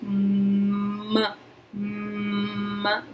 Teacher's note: O M, a vibração, como ele é um fonema nasal aqui, M, M, vibra aqui no nariz.